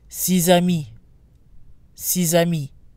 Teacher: when followed by a vow the ex is pronounced but now sounds like a Z again due to liaison